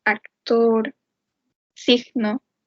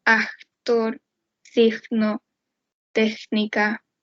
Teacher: la consonante velar oclusiva sorda y sonora pasan a ser una velar fricativa sorda